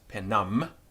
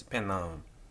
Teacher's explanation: the M on the end of the Latin word simply nasalized the final vowel